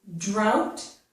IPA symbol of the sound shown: ɑʊ